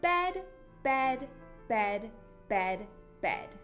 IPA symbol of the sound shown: b